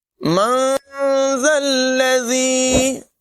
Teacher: ذال کے اندر سیٹی کی آواز ہرگز پیدا نہ ہونے دیں، اسے عام طور پر سیٹی کے ساتھ پڑھا جاتا ہے جو کہ غلط ہے، ذلذی نہیں پڑھیں گے۔